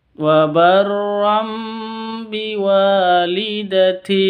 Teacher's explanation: Tanwin berjumpa atau bertemu dengan ba, dibaca dengung. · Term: iklab